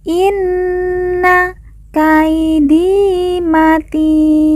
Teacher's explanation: yang merupakan tanda baca panjang dua harakat Inna Kaidi matin kemudian Ti kita baca panjang 2 empat atau enam harakat karena di depannya terdapat huruf Lin yaitu huruf Ya Sukun sebelum huruf pemberhentian yaitu huruf nun Inna